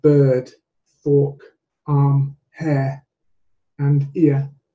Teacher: you can see in the spelling there's an R, which in my accent is not really audible as an R. The R merely changes the quality of the vowel before it.